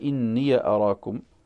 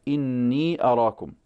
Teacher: ففتحها البزي هكذا إني أراكم، وموافقة لقراءة نافع. وقرأ قنبل بإسكانها إني أراكم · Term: ياء إضافة